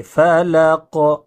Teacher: قاف پہ جب جزم ہو تو قلقلہ ہوتا ہے، یعنی آواز ٹکراتی ہے۔ فلق، فلق نہیں، فلق نہیں بلکہ فلق۔